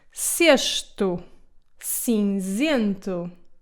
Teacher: if the C comes before an E or an I, it will become soft and it will sound more like the S sound